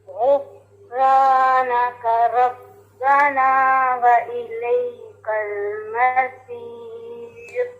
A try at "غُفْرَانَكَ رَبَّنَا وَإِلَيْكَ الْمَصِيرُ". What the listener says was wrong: اب یہ دیکھیں، یہ لفظ ہے غفرا، را نہیں پڑھنا اس کو، ٹھیک ہے، یہ ہیوی ہے.